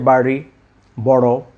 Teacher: যেমন আমরা যে বলি যে বাড়ি, বড়, এটি কিন্তু উচ্চারণ অত সহজ নয়। একটু মুখের ভিতরে ড এবং র এর মাঝামাঝি উচ্চারণ করতে হবে।